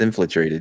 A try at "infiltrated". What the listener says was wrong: Matt thinks put an extra L somewhere that it didn't belong.